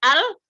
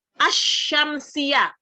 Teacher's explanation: kalau alqamariyah lam lam disukunnya kedengaran kalau asyamsiah tidak kedengaran